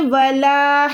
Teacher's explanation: یہ الف مدہ ہوتی ہے اس کو کھینچنا ہوتا ہے